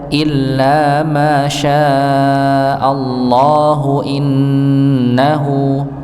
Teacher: Mimnya dibaca dua harakat, syinya dibaca empat harakat. Ketika masuk pada lafaz Allah dan kita nyambung, maka hanya dibaca dua harakat saja.